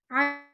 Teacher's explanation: یہ حلق کے دوسرے حصے سے، درمیان والے حصے سے ادا ہوتا ہے